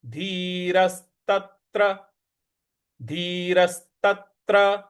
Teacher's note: र के बाद जो स है उस पर हमको बल लगाना है।